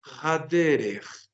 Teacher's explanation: Y miren que el artículo tiene su pataj y reduplica la primera consonante que sigue